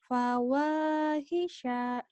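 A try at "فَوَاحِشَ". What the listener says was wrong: Pendek. Fawahisha. Fawahisha.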